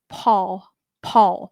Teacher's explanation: You can hear that with the P. Uh there's more air, right?